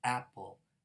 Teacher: I could start it with that glottal stop that consonant Apple I'm actually starting with a Apple Apple instead